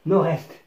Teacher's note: الربط يتم عن طريق من هنا مع حرف الR وليس حرف D